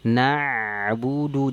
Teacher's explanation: salah satu sifat ain itu apa? Tawassud. Bainiyah mengalir suara. Na'budu, jangan na'budu tidak, tapi dialirkan na'budu. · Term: sifat tawassud